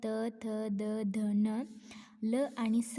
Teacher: त थ द ध न ल आणि स यांचे उच्चारण स्थान काय आहे दंत दंत म्हणजे दात